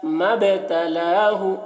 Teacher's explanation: با میں قلقلہ، با کی آواز میں ایک قسم کی جنبش ہوتی ہے